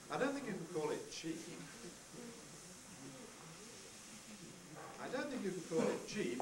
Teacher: we start high for the onset, don't, then come down steadily.